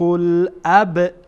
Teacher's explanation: با در اینجا قلقله میشه